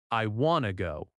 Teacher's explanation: The T in want often softens when it connects to to.